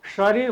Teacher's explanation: जस्तो शरीर भन्नुपर्दा हाम्रो मुखभित्र रहेको जुन तालु घुमेको भाग छ त्यहाँबाट यो उच्चारण हुन्छ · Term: तालव्य